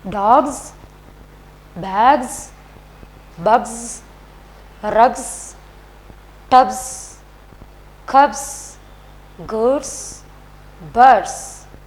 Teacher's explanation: These are the voiced sounds. So at the end of the word we have to add z, z sound.